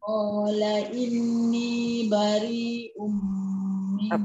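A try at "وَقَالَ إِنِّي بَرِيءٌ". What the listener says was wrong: Kurang panjang tu. Bari 4 atau 5. Yang itu wajib unah inni bari. Kat sini ayat ni susah sikit sebab dia ada banyak dengung lepas tu dengan mat kan. Tu kadang-kadang tak sama rhythm.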